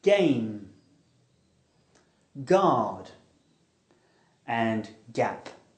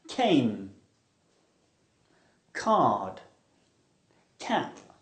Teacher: These sounds are produced by stopping and releasing airflow with the back of the tongue almost at the top of the throat. G is voiced and k is aspirated.